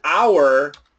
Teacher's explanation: When we say the word hour, the H is silent, not subtle, silent. It's gone.